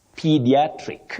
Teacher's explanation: Pie is quite common, but you don't say pie at the beginning. You say P with a long, high front sound E.